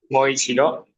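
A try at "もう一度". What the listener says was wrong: Itu pendek maunya.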